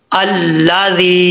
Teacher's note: आगे या मद्दा है या साकन से पहले जर है तो या मद्दा होता है एक अलिफ की मकद इसको लंबा करेंगे